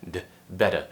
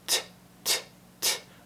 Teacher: So it sounds like a mixture of a T and a D. It's just a quick tap of the tongue